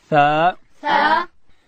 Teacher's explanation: ثا ادا کیږي چې کله د ژبې سر د لوړې زامې د مخ دوه غاښو سرو ته د ژبې سر وروړو، دلته حرف ثا ادا کیږي.